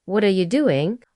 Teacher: What and doing are often stressed while are you is reduced to a quick a are.